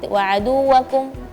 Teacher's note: Ada beberapa huruf tasydid yang ee kurang tasydidnya seperti aduwi wauwakum tadi. Waaduwakum terdengar waaduakum tidak ada tasydid huruf wau. Sedangkan di situ ada ada tasydid.